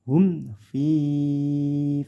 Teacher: di sini ada mim sukun bertemu Fa Ini namanya izhar syafawi tidak boleh dibaca dengung tapi jelas